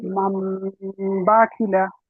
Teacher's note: সাকিনকে বলতে হবে, নুন সাকিনকে মিম দ্বারা পরিবর্তন করে নুন একালি পরিমাণ সাকিন গুণনা সহ করতে হবে।